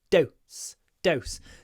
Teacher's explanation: The O is clipped before the S. Dose. So obviously dose and nose are pronounced differently.